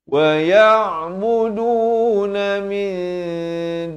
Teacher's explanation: Wa ya'buduna min, samarkan di sini ikhfa kiki dua harakat. Daripada min jadi mi, nak kata nun pun tidak, dal pun tidak, dengan cara dua harakat.